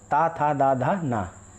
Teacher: ता जो आपकी जो जवान है दांत में लगे, ता, था, दा, धा, ना, ये दंत कहलाते हैं, दंत व्यंजन